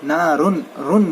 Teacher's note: نون کو ظاہر کر کے پڑھیں گے، یعنی کہ نارن، رن، نون کی آواز بتلا کے پڑھیں گے